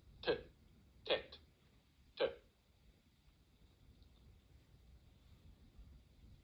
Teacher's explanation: the letter T, but pronounced slightly further back in the mouth, as you might hear it in some Indian subcontinent accents